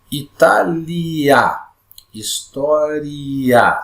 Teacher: E tem a vogal A. Essa vogal I, ela é pronunciada com menos intensidade. E a vogal A é pronunciada com mais intensidade. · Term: ditongo crescente